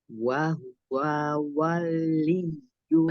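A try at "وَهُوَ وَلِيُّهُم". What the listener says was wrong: Jangan. Wanya masih kepanjangan, jangan wal. Lagian jangan wal. Waliyuhum.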